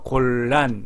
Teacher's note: 곤란에서 곤하고 곤의 니은하고 란의 리을이 바뀌어서 곤의 니은이 골로 바뀌었습니다